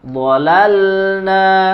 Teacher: Nun huruf tersendiri dan juga lam huruf tersendiri Jangan DI leburkan atau jangan diidamkan